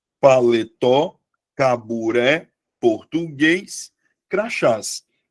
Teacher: todas as palavras tenham como sílaba tônica a última sílaba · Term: oxítona